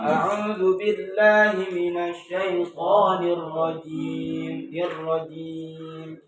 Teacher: jim ini sebenarnya tidak berdesis dia. Maksudnya enggak ada aliran nafasnya.